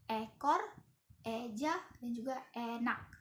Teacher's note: cirinya itu lidah di depan agak naik ke atas, bibir tidak dibulatkan. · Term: vokal E